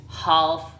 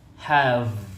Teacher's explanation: So the F or the F is unvoiced, and then the V or V is voiced. And both of them are made by parallelly blocking the air with your lower lip in your upper lip.